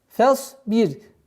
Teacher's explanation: Произношение буквы ра здесь мягкое, потому что впереди стоит огласовка кесра.